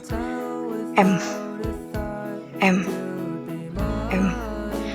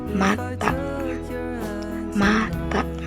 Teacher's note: Cara pembentukannya bibir menutup rapat dan udara keluar lewat hidung